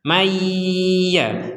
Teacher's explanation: Kalau yang tidak tertulis nun sukun ketika bertemu dengan ya di sini, maka kita membacanya nunnya dimasukkan ke huruf ya disertai dengungan.